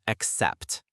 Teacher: The pronunciation is accept, with the stress on the second syllable.